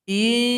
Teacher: Kemudian masih surat Al-Waqi'ah, sekarang ayat 35. Di sini cara berhentinya hamzah yang fathatain hilangkan satu harokat, dipanjangkan dua ketukan.